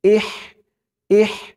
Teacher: হার উচ্চারণটা গলার ভিতর থেকে চিকুন হয়ে বের হবে